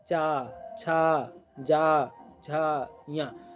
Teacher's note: चा वर्ग ताल से उच्चारित वर्ण है